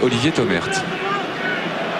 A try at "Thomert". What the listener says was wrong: Thomer, hein, il paraît qu'il ne faut pas prononcer le T. Et il faut dire Thomer. Le thé est muet, comme dirait l'autre.